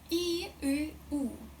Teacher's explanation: With each sound, my tongue goes further back